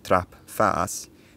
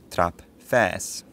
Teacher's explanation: it tells us that the face vowel was probably higher in the mouth than the trap vowel